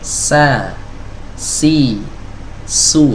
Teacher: Kalau kita mengucapkan sa, ujung lidah kita nempel ke dinding bawah, ya. Dinding bagian dalam yang bagian bawahnya dari gigi seri bawah, ya. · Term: huruf sin